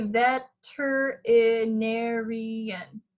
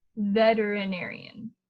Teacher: The T, a lot of times we say it as a D to make it easier to say. So we could say, and that's how I pronounce it too, is with the D sound.